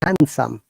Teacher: In handsome, the D is silent. We don't need to pronounce D at all.